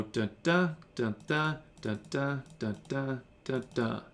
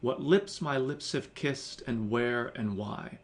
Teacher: So there's 5 unstressed, and there's 5 stressed, and they always follow that pattern of unstressed, then stressed, unstressed, then stressed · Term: iambic pentameter